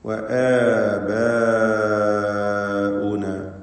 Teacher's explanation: ആബാഉന എന്നതിലാണെങ്കിൽ മദ് മുത്തസിൽ വാജിബ് വരുന്നു അലിഫിന്, ബായിന്റെ അലിഫ്. നിർബന്ധമായും 4-5 ഹറക്കത്തിന്റെ അളവിൽ അതിനെ ദീർഘിപ്പിക്കണം.